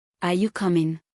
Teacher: Are you coming? Rising yes/ no question.